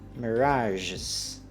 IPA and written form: məˈrɑʒɪz (Mirage's)